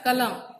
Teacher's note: म का जो अ है उसको खींचा नहीं जाता, कलम। कलम मतलब तुरंत खत्म हो रहा है, अ वहां पे उच्चारित नहीं हो रहा है।